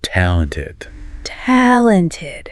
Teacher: let's practice saying talented really emphasizing that first syllable